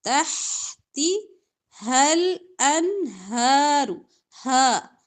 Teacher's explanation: کے آخری حصے سے ادا ہوگا، اقصی حلق سے، ٹھیک ہے؟ یہاں پہ سانس کی آمیزش نہ ہو، سانس کی آواز ملی جلی نہ، ہا کلیئر آواز آئے گی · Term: دو آنکھوں والا ہا